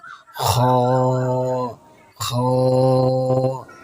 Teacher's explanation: এটি আমাদের কণ্ঠনালীর শুরু থেকে আসবে। একটি গাম্ভীর্য নিয়ে মোটা করে বলুন